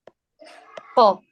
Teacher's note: اگر موٹے حرف کے اوپر زبر آ رہا ہے آپ کا، جیسے قاف زبر قا قا، تو پیچھے سے آپ کی زبان اٹھے گی، آگے سے آپ کی زبان فلیٹ ہی ہوگی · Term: موٹا